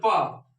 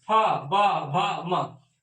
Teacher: ओठ से बिना ओठ सटा हुआ आवाज नहीं आएगा।